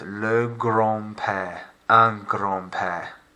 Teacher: Notice that the letter D is silent.